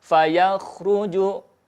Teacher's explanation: huruf kha bergetar dengan lembut, ya. Fayakhruju, jangan ditarik lagi, kalau ditarik lagi pasti memantul.